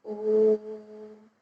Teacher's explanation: यहाँ ओ को मैंने तिगुना समय लेकर बोला और फिर हम म तक गए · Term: प्लुत स्वर